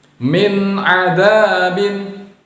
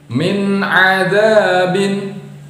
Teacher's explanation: Min nun sukun atau nun sakinah bertemu dengan ain maka dibaca jelas.